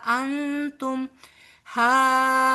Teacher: نون ساکن کے بعد تا آ رہا ہے جہاں بھی اخفا ہوگا